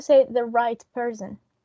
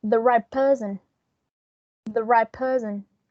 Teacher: In this case, the T, it's going to be influenced by the P, and it's going to be pronounced as a P because the first element, in this case, the T, it's going to change in order to adapt to the articulation of the following sound.